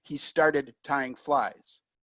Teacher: You cannot hear the T if I say he started tying flies. Then it's a D, started.